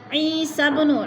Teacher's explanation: با حروف قلقلہ میں سے ہے اور ساکن ہے، ہلا کر پڑھیں گے